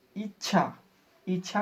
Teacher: जैसे इच्छा, इच्छा को जैसे बोलते हैं तो ई के बाद डायरेक्ट हल्का च बोलकर छ बोल देते हैं, तो ये दोनों के बीच जो संक्रमण उत्पन्न हो रहा है यही संगम है। इच्छा बोलने वक्त लग रहा है कि च को बोल ही नहीं रहे, लेकिन इतना जल्दी से बोल देते हैं